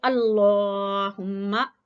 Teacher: लफ्ज़ अल्लाह को मोटा पढ़ना है क्योंकि आप देखें लाम के ऊपर खड़ी जबर भी है और लाम से पहले वाले हरफ पर जबर है।